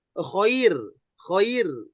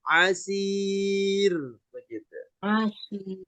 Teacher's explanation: Kemudian setelahnya ada ro. Nah ro-nya dibaca tipis bukan sebelumnya fathah. Ya, tapi karena sebelumnya ada ya mati. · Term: ro tipis